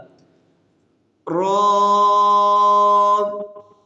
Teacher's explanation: را کو 2 سیکنڈ تک لمبا کریں گے اور موٹا بھی کریں گے، کیونکہ یہ گرین کلر والے حروف میں سے ہے اس لیے۔